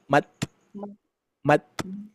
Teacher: pengucapan huruf ta itu enggak usah bertenaga kita tempelkan saja